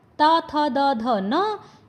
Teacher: जब आप इन वर्णों को बोलते हो तो आपकी जो जीभ है आपके दांतों को टच करती है, इसीलिए इनको जो दंतों वाले वर्ण बोलते हैं।